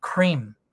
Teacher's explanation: So nếu quý vị lấy cái tay để trước miệng á, mình đọc cream, mình thấy cái hơi nó sẽ đập vào cái tơ tay mình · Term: aspirated